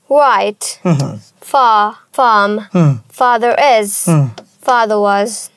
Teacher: ব্রিটিশরা যদি আর এর পরে ভাওয়াল থাকে তাহলে আর এর উচ্চারণ করে, এছাড়া করে না। আর আমেরিকানরা সব সময় করে।